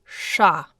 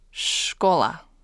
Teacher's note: it's what's called a retroflex sound. So you're actually going to turn the tip of your tongue backwards as you say kind of an SH-like sound. Sha.